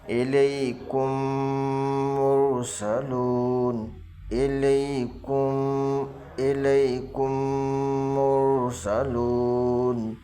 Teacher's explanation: اخفاء شفوی، ادغام شفوی، سمجھ رہے ہیں؟ اگر میم آئے گا، میم کے بعد میم آتا ہے تو میم کو میم سے ملا کر گنہ کے ساتھ پڑھیں گے، ایک الف کے برابر گنہ کرنا ہے ، اس طرح سے دیکھیے گا میری انگلی، الیکم مرسلون، الیکم،